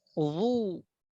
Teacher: ada ketebalan, ya, ketebalan pada pengucapan huruf dha